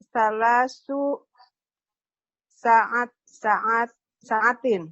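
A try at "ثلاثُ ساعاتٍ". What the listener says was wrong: Panjang pendeknya. Sa'atin. Hanya jadi panjang.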